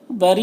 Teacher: را کے نیچے زیر را کو باریک پڑھیں گے اور یہ جو مد ہے یہ مد متصل ہے، اسے 3 سے 4 الف کے برابر کھینچیں گے.